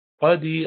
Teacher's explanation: قدیر قاف موٹا ہے حروف مستعلیہ میں سے، قدیر، اور یا سے پہلے زیر ہے اس لیے اس کو لمبا کریں گے کیونکہ ہم رک رہے ہیں اور یہ سیکنڈ لاسٹ لیٹر ہے، تو اس پر ہم مد العارض للسکون کرتے ہیں۔